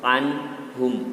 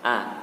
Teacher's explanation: Jadi huruf ain itu letaknya berada di dalam kerongkongan. Anhum, tidak di rongga mulut.